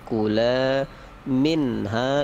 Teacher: nun mati bertemu ha, harus jelas, jangan dengung, jangan samar, tetapi pasti jelas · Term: izhar